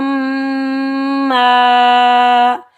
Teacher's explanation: الف خالی سے پہلے میم کے اوپر زبر ہے تو الف مدہ ہے، تو اس کو ہم ایک الف کی مقدار کھینچ کر ادا کریں گے۔